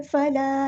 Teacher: अलिफ मद्दा आ गया है, तो हमने यहाँ पे एक अलिफ के बराबर लंबा करना है, मद इसलिए हो रही है, फला तजअलू।